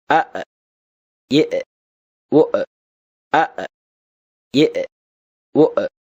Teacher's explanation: அலிஃப் தொண்டையின் அடிபாகத்திலிருந்து ஒலிக்கப் பெறுகிறது.